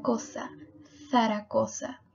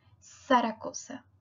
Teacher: como si estuvieras mordiendo la lengua ok parecido a la th del inglés